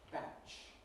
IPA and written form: bæʧ (batch)